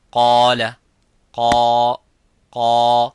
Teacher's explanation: the alif is mufakham, it is a heavy because of the qaf. So whenever the letter is heavy, you make the letter alif qaf, the letter alif of mad heavy.